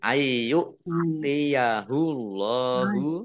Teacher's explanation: Ayu nun sukun bertemu dengan huruf iya, bacaan idgham bi gunnah, masuk dengan mendengung. Masuk ke huruf iya.